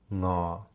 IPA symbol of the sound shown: ŋ